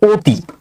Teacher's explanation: এই যে অ যে বর্ণটা, বর্ণ আমরা দেখতেছি অ, কিন্তু এর উচ্চারণ হয়ে যাবে ও ধ্বনির মতো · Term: সংবৃত উচ্চারণ